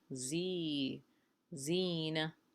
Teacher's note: And so that gives us a sound a at the end of the word. Okay, and za here is followed with a long ya.